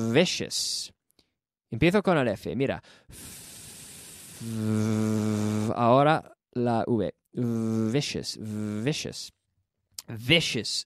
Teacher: the v is secretly the same as an f it's a vocalized f if you say vicious then you add the vocal chord you